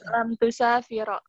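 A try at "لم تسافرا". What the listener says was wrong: Lam tusafiro asin dengan sin yang kecil dan bukan dengan sin tapi sahih ya. Antuma tusafironi, antuma lan tusafiro, antuma lam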